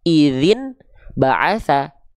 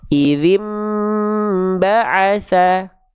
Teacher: Ketika dibalik an-nya ke em ditahan 2 harokat. Min tidak, tapi mim tahan 2 harokat. · Kalau pakai hukum tajwid, an-nya diiklabkan ke mim. · Bunyi an di sini dibalik ke bunyi mim, yaitu konsonan mim